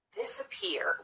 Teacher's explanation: An example of secondary stress would be the first syllable in this word, disappear. We do spend some time on this syllable, and we do make the vowel louder and longer, but not quite as much as we do on this last syllable, the third syllable, peer. · But because we don't spend quite as much time on the disappear, we categorize that as secondary stress. And if you notice this middle syllable, we just rush through as quickly as we can